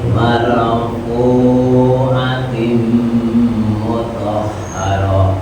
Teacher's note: Huruf fu ya, fu dipanjangkan, dua ketukan